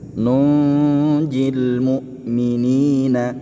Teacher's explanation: nunnya dibaca dengung ee dibaca ikhfa samar-samar disertai dengan dengung